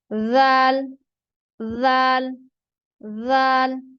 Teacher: जब आप ज़ाल अदा करेंगे तो जबान की नोक जो है ऊपर वाले और नीचे वाले दांतों के दरमियान आ जाए, बाहर नहीं आनी चाहिए